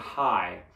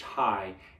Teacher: you have ah on that vowel and then at the last second you have e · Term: diphthongs